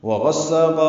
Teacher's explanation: واو ہونٹوں کی نا تمام گلائی سے ادا ہوگی، غین پر پڑھیں گے، سین سے ملائیں گے، سا الف مدہ قا الف مدہ مد عوض وغساقا وقفا۔